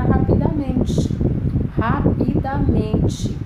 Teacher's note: Rapidamente é uma palavra de 5 sílabas, cuja sílaba tônica é men.